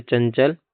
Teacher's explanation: अनुस्वर अंग इसका उच्चारण केवल नाक से होता है।